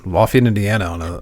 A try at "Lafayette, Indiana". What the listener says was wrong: Lafayette, Indiana. You just said it as one word. Lafayette, Indiana. Lafayette.